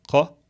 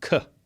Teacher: In Arabic, this letter is pronounced in the throat, qa, as opposed to k.